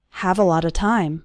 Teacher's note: All of those little words, a lot of, run together into a lotta